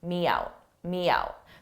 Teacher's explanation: So you don't hear it when you're speaking at a fast pace, but if you slowed it down, you would hear the very slight y in front of out